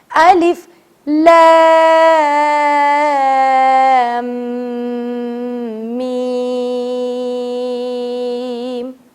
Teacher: میم پر بھی مد واجب ہے, تو میم کو بھی ایٹ لیسٹ کم سے کم منیمم 4 الف کے برابر کھینچنا ہے